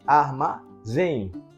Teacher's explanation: A sílaba tônica é o zen.